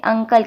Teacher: غنہ نہیں کرنا، زبان اوپر تالو کے ساتھ نہیں لگانی، آواز کو چھپانا ہے. نون کی آواز کو چھپانا ہے، پوری طرح نہیں نکالنا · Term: اکفا